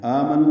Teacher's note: دیں گے، دال نرمی سے پڑھیں گے، زی یا مدہ ہے، آمنو میں آ مد بدل ہے، دو حرکات لمبا کریں گے